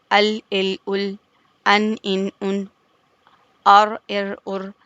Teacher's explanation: طرفیہ کہتے ہیں طرف زبان، یعنی زبان کے کناروں سے جو حروف ادا ہوتے ہیں، اس میں ہے لام، نون اور را۔ · زبان کی کروٹ آگے کی جانب، اور یہ اوپر کے داڑوں سے یا اس کے دانتوں کے مسوڑوں سے مل رہی ہے، وہاں سے لام اور نون ادا ہو رہے ہیں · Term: حروف طرفیہ